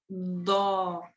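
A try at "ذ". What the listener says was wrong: No, don't jam. If your tongue gets jammed, that's not right. That's going to be closer to this. You have to make sure your tongue comes out. Gently touch your tongue, the front of your tongue, your top 2 teeth, and blow air and vibrate.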